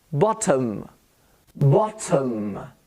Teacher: The O becomes a schwa sound.